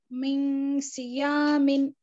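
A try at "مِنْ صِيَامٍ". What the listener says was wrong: मिन, नून जाहिर हो रहा आप पढ़ रहे तो मिन, नूने साकिन के बाद स्वाद है, स्वाद हुरफ इख्फा में से है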